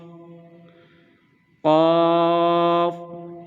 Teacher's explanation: یہ حروف مستعلیہ ہے، ہم اس کو بھی ہیوی اسٹرانگ یعنی موٹا کر کے پڑھیں گے۔